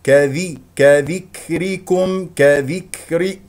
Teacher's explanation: ونحرص على كسره الذال والراء والراء مكسوره اذا مرققه